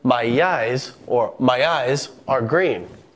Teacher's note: we sneak in just a hint of a Y sound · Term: extra lettering